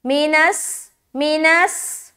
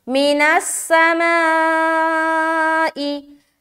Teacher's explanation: हर्फ सीन को अदा करते वक्त इस बात का ख्याल रखे कि सिफत सफ़ीर जाहिर होना चाहिए, ठीक है। सिफत सफ़ीर यानी कि सीटी वाली जो सिफत है वो जाहिर होनी चाहिए जब आप सीन को अदा कर रहे हैं